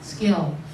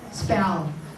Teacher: this t p k after s will become d b g